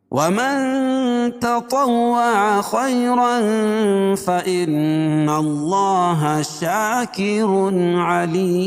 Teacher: خیر خا کو پور پڑھیں گے اور یائلین ہے، اور تنوین کے بعد حروف اخفاء کے 15 حرفوں میں سے فا ہے تو یہاں ناک میں آواز کو چھپا کر پڑھیں گے